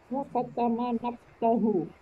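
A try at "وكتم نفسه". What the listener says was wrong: Ya, nafasahu. Kalau nafsun fanya tidak ada harokat. Kalau nafsun artinya diri atau jiwa. Kalau nafasun artinya nafas.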